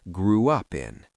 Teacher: Some speakers add a soft W sound to glide between the vowel sounds.